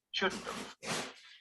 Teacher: When we use these phrases in the negative, we reduce both not and have.